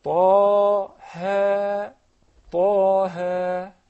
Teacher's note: It spells as Ta'an Alif. And this Alif will be lengthened only two counts. Mad Tabi'i, so say Taha, Taha, Bas.